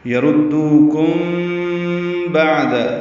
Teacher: یردوکم بعد یہ اخفاء شفوی ہے، ہونٹوں کو بالکل قریب لے آئیں گے، دونوں ہونٹوں کو، اور با میں ہونٹ ملا دیں گے. یردوکم بعد عین ساکن پہ اظہار، دال کو جلدی ادا کریں گے.